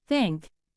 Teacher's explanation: the air is expelled without any vocal cord vibration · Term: voiceless dental fricative